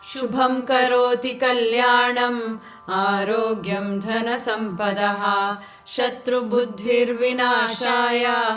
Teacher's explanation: ಇಲ್ಲಿ ಶುಭಂ ಅಲ್ಲಿ ಭಾ ಮಹಾಪ್ರಾಣ, ಧನ ಅಲ್ಲಿ ಧ ಮಹಾಪ್ರಾಣ, ಬುದ್ಧಿ ಧಿ ಮಹಾಪ್ರಾಣ ಇದೆ.